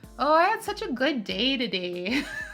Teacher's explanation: It' be like, "Oh, I had such a good day today." like or it's like very long a like very kind of nasely like I'm realizing like it's you have like a nasal kind of intonation with the A's too